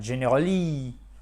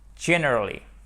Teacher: Si vous ne mettez pas l'accent tonique sur la première syllabe du mot, vous allez vous planter pour la prononciation. Vous allez faire generally, for example.